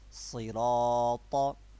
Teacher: We have to make a thick tone in ra because ra has fatha